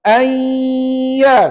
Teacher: Kena ready, bunyi dengung dua harakat.